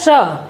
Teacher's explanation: इसका उच्चारण तालु के पीछे जब जीभ टच करेगी तो तालु के पीछे से इसका आवाज आता है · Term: मूर्धन्य